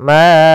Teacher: Kemudian ma'a'bud, ada bacaan mad jaiz munfasil, yaitu suara ma-nya dipanjangkan sepanjang 4 harokat. Mad jaiz munfasil terjadi sebagaimana tadilah, yaitu adanya hamzah yang datang setelah huruf mad.